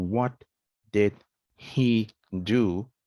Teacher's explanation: we are dropping the h sound